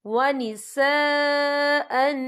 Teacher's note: یہ دیکھیں ونساء، یہاں خالد سے پہلے زبر ہے اور اس پر مد بھی ہے، یہ مد جو ہے مد متصل ہے، اس کی مقدار 4 حرکت کے برابر ہے تو ہم اسے 4 حرکت کے برابر کھینچ کے پڑھیں گے.